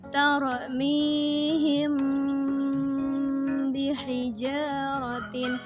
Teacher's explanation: Adapun cara bacanya ialah dengan menyamarkan bunyi mim kemudian mendengungkan sebanyak 2-3 harokat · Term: Ikhfa Syafawi